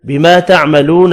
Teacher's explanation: الف مدہ واو مدہ ایک ایک الف کی مقدار میں کھینچ کر پڑھے جائیں گے